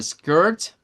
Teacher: Siempre debe de acompañarse él con una R. Es un sonido con roticidad se le llama, es decir, que depende de la R para sonar. Sin la R no existe.